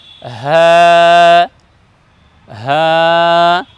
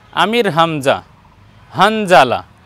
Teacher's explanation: জি তারপরের বর্ণ দেখুন হা এই বর্ণকে আমরা উচ্চারণ করব হা হলকের শুরু থেকে উচ্চারণ করব হা